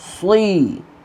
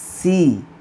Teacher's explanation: সদ জের সই, এটি যদি পাতলা হয়ে যায় সি বলে তখন সিন জের সি এর সাথে মিলে যায়